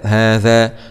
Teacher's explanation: هاء فتح هاء، ألف صغيرة مضي طبيعي، هاء ذال فتح ذا، هذا مع مراعاة مخرج الذال، طرف اللسان مع أطراف الثنايا العليا